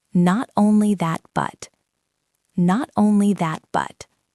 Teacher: the stress usually falls on that